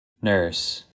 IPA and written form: nɝs (nurse)